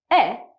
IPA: e